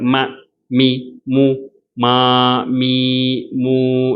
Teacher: எல்லாமே இந்த இரண்டு உதடுகள் சேர்க்கறது மூலமாதான் வரும்